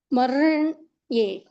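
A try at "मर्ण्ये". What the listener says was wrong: See, you are telling ir, but while you are telling, that is while you are joining, you are telling maranye. Ra is coming. It is not ra. R. Marn.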